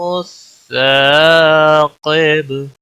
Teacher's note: با پر قلقلہ ہوگا رکنے کی صورت میں